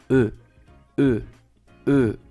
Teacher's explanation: Nuevamente, la E francesa es un sonido como si fueras a pronunciar la U con los labios así cerrados, congelados, pero pronuncias E